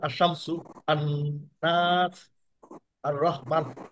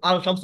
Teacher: লামটা উচ্চারিত হবে না হরফে শামসতে